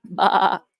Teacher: you'll notice I'm not pronouncing the r and I removed the letter R from the phonetics bar that's